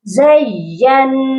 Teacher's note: نون مشدد ہے اور اس پر ہم نے غنہ بھی کرنا ہے، تو یہ زینا نہیں پڑھا جائے گا، زین۔